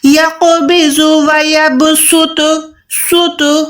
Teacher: سوت یہ موٹا ہو جائے گا یعنی صاد ادا ہوگا۔